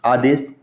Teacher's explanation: इसमें जो स होगा ये कौन सा स रहेगा यहाँ पर, ये तालव्य स होगा